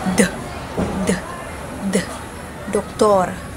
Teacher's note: Next is the titik D. Pangipin. At ang paraan ng artikulasyon nito ay pasara na may tunog.